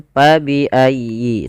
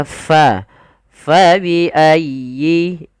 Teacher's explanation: tapi Fa dialirkan nafasnya karena huruf Fa memiliki Salah satu sifat yaitu sifat hamus artinya mengalir Nya Nafas kita maka Fa faiayyi kemudian dilfal huruf